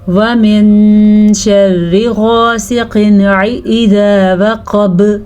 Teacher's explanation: غاسقن میں غین بھی پر پڑھیں گے اور قاف بھی پر پڑھیں گے